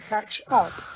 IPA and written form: ˈkætʃ ˈʌp (catch up)